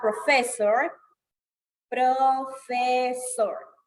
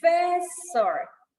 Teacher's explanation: The word stress is in the second syllable.